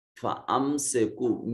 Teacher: میم ساکن ہے، اور اس کے بعد بھی نہ با ہے نہ میم ہے، یا میم کو ظاہر کریں گے، اظہار شفوی کہلائے گا